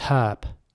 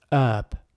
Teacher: in British English the H is basically pronounced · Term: H sound